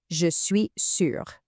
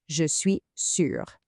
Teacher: Did you notice how the E sound in je pretty much disappears? It's not really je suis, it's more of a quick je suis.